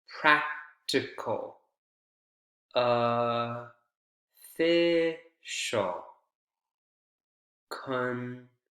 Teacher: all of the unstressed vowels sound like schwa, especially in the first three.